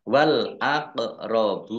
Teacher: bacaan qolqalah dibaca memantul ditampakkan pantulannya · Wal aqrabuna, alif lam komariah ditandai lamnya dibaca sukun. Qaf sukun bacaan kolkolah dibaca memantul ditampakkan pantulannya. Ba domah wawu sukun mat tabi'i panjang 2 harokat.